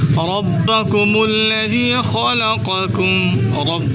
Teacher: رب را کو پر کر کے پڑھیں، یعنی را کو موٹا کر کے پڑھیں، را پر زبر ہے